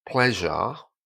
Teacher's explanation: at the end with a word like pleasure, the R disappears again and is replaced with an A.